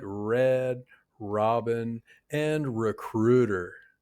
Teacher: This sounds really different from the R sound in some languages. In American English, we don't roll or tap the R. We make a smooth continuous sound. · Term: American R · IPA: /ɹ/